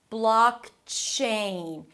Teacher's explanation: Close it with a k sound, block, and then move on immediately to the ch sound as in chicken.